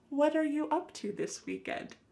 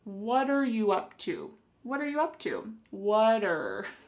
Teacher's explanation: the word what and are creating a spoken contraction